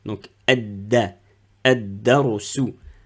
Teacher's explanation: 1, 2, 3, elle porte pas une shadda. Donc ici, je ne prononce pas la lettre lem